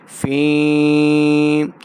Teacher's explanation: فا ہوا فی فا یا زیر فی، یا ساکن سے پہلے زیر ہو تو یا مدہ، ہم اس کو 2 حرکات لمبا کریں گے